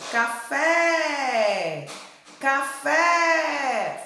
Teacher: Qual foi a sílaba que mais se alongou? Foi a segunda sílaba, fé.